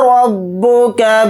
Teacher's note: را کے اوپر زبر ہے تو را کو موٹا یعنی پر پڑھیں گے